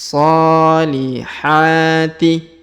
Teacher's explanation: huruf ha kita panjangkan dua harakat karena ada Alif kecil di atasnya